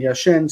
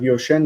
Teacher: a lot of Israelis, instead of saying yashen, say yoshen for the participle, and that's a mistake. It's not yoshen, but yashen.